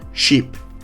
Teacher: to produce the sound in sheep, your tongue should be high and towards the front of your mouth